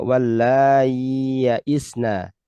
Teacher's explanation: Karena menurut madhabnya adalah mengganti hamzah dengan ya sukun, maka tidak boleh diidghamkan. Jadi dibaca wallai ya'isna.